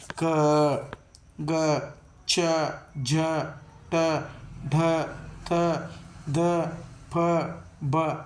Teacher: ಅಲ್ಪ ಮಾತ್ರೆಯಲ್ಲಿ ಉಸಿರನ್ನು ತೆಗೆದುಕೊಳ್ಳುವುದರ ಮೂಲಕ ಉಚ್ಚಾರ ಮಾಡತಕಂತವುಗಳು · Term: ಅಲ್ಪಪ್ರಾಣ